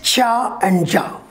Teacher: involves a complete closure of air flow just like plosives not at the lips but at the alveolar range with the help of the tongue and sudden release in the picture you will see that the tongue is touched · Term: affricates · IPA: [tʃ, dʒ]